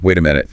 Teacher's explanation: Stress on the first syllable, short I sounds. That's the unit of time.